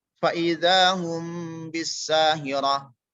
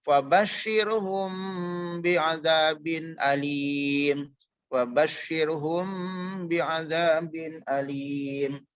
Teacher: Jadi mimnya tidak harus dikuatkan. Cara pembacaan tidak harus dirapatkan untuk masalah bibir karena bertemu dengan ba ya.